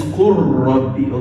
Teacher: It is qul and rabb, but complete idgham.